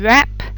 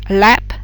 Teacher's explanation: your tongue is nowhere touching your mouth, whereas with lap, the tip of your tongue is behind your top teeth